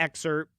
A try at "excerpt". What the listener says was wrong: There's a P in excerpt.